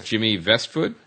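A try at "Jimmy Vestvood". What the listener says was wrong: Yeah, and it's Westwood pronounced with, it's like Westwood, but with V's.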